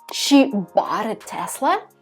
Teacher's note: here you're emphasizing bought because maybe you assumed she was leasing it or like renting it.